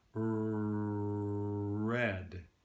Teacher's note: we tend to take our R sounds in general the various ones and we tend to round them slightly so we add a little bit of rounding to them